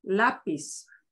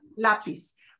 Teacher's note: S sound but no Z no buzz to it so it should just be a flat out flat s sound